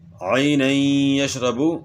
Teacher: با میں قلقلہ بھی ہوگا ساتھ کیونکہ با حروف قلقلہ میں سے ہے